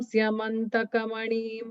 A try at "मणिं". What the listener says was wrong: Manim is the half, the short ni. Manim. No, but not manim. Manim. Manim.